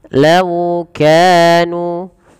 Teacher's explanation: Pada lafal lau lembutkan lafal waw dan monyongkan sedikit untuk menyempurnakan dari makhraj huruf waw bibir kita ke depan